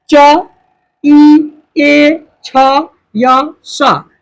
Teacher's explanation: च ई ए छ या स सब बोल के चेक कीजिएगा, बिना तालु में सटाए नहीं बोल सकते